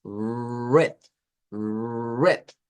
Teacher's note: Quizás le digan como R suave, red, red, pero es más bien una R aproximante, que es red, red.